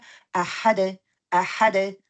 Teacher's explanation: ये कलकलाई वुस्ता हो जाएगा, एंड पे आ रहा है और सुकून आरिदा में लगा रही हूँ